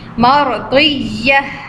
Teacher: ra silent, but the last sign is zabar, so we'll have fat sound again